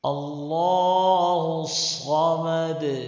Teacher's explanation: دال ساکن کو قلقلے کے ساتھ پڑھنا چاہیے